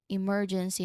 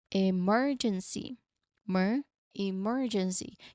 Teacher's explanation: remember to stress that second syllable, mer. So, that's where the syllable stress will be happening.